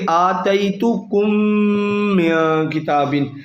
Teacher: کم جو ہے اس کی میم ساکن ہے، اس کے بعد میم آ گئی، تو میم جب آ جائے تو ادغام شفوی کا قاعدہ ہوتا ہے، یعنی غنہ کیا جائے گا